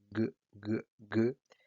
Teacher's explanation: g, g, g es la variante sonora de k